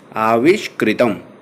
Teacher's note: विसर्ग को मूर्धन्य श हो गया है